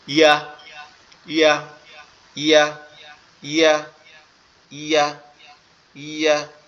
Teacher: এটা আমাদের জিহ্বার মধ্যকান উপরের তালুর সঙ্গে লাগবে। তো জিহ্বার মধ্যকান উপরের তালুর সঙ্গে লাগাইতে হলে আমাদের একটা কাজ করতে হবে, সেটা হচ্ছে কি আমাদেরকে দুই পাটি, দাঁতের পাটি একসাথে চেপে ধরতে হবে।